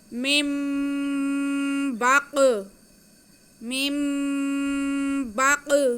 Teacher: میم کے نیچے دیر ہے اور نون ساکن ہے، نون ساکن کے بعد با آ رہا ہے، تو یہاں پہ بھی ہم نون کے بعد کو با نون کی آواز کو میم میں بدل کر پڑھیں گے اور غنہ کرتے ہوئے با ادا کریں گے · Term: اقلاب